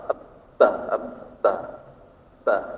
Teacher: Sewaktu diucapkan, napas kita tertahan. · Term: al-jahr